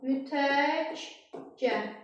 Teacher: Q öz cingiltili qarşılığı ilə dəyişdi, çevrildi cingiltili qarşılığına. Q, G samiti kimi tələffüz edildi.